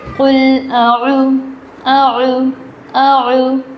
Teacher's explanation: عین کے ساتھ واو آیا ہے، عین واو پیش او. تو یہ عین جو ہے یہ حلق کے درمیانی حصے سے ادا ہوگا